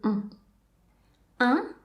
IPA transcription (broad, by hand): õ